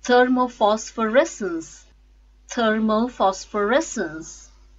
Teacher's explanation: stresses on fifth syllable res